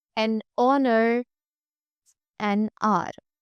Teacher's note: honest begins with a vowel sound O as in orange